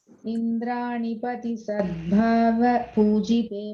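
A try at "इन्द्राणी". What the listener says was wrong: Indrani long e. Second time you made it a short one.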